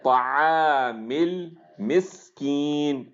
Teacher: سین کے اندر صفیر آئے گی